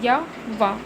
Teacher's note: फिर आपका आएगा अर्ध स्वर। इनके बोलने से मुख्य द्वार बहुत सकरा हो जाता है और हवा स्वर की भांति बीच से निकल जाती है